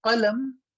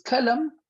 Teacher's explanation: For example, a letter qaf with the two dot at the top and a letter kaf. So qaf is heavy, kaf is light. They both come from very close to each other. Their makharij, their articulation point is very close to each other.